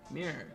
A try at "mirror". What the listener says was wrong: There's multiple fucking syllables, you schmuck.